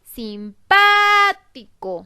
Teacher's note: Si la sílaba pa es la que tiene la mayor fuerza de voz, yo voy a observar la sílaba co es la última, la sílaba ti es la penúltima, la sílaba pa es la antepenúltima. Eso quiere decir que la palabra simpático es una palabra esdrújula. Y como las reglas de acentuación de las palabras esdrújulas me dicen que siempre llevan acento, pues la palabra simpático está acentuada, lleva la tilde en la sílaba pa.